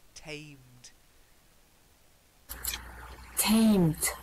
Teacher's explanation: Remember, it's a long A sound. Not temmed, tamed.